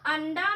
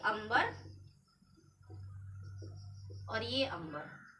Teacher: तो अनुस्वार ही है, यहाँ पर अनुस्वार से, यहाँ पर के अनुस्वार से न की आवाज आई और यहाँ पर के अनुस्वार से म की आवाज आई, इसलिए यहाँ पर की अंग्रेजी हमारी क्या हो गई, ए एन की अंग्रेजी ए एम।